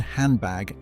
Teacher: Your tongue landed in a position for the D and then, before you were even done [music] with it, it was already preparing for the B. The sounds blurred into each other. The D didn't fully resolve before the B began. This is called coarticulation.